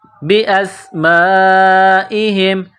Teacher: سین کو باریک کرنا ہے، سیٹی کی آواز پیدا کرنی ہے۔ یہ مد ہے، 4 الف کے برابر کھینچ کر پڑھیں گے۔